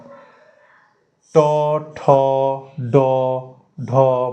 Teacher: জিভের ডগাটা একদম ওপরের উপরিভাগটা গিয়ে তালুর পেছন দিকটায় ঠেকছে, ওটাকে বলা হয় মূর্ধা। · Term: মূর্ধন্য